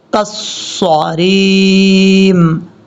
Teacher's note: کاف کو صاد سے ملائیں گے، بیچ میں الف یہ لام ہے، چھوڑ دیں گے. کاف صاد زبر کس، صاد زبر صا کالصریم.